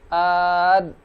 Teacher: Maka kalau kita coba misalnya huruf dal, maka kalau kita ucapkan dalam kondisi sukun, ad, nah tanpa qalqalah, ad, dan kita rasakan nafas tertahan, berarti huruf dal memiliki sifat jahar.